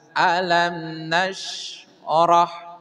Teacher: berarti bacanya harus jelas tidak boleh di dengung